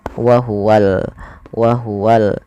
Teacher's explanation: sini kita namakan dengan alif lam yaitu alif lam qamariah maka Alif lamnya harus dengan jelas dibaca lam nya